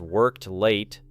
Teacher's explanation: Repeat the transition slowly as worked late, allowing the final T to remain short but complete